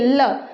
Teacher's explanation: तो जब हम ल बोलते हैं तो जीवा तो वहीं की वहीं रहती है, लेकिन उसके पार्श्व से उसके दोनों ओर से हवा पार हो जाती है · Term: पार्श्विक व्यंजन